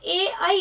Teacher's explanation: जो ए ऐ है वो कंठ और तालु से बोला जाता है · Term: कंठ तालु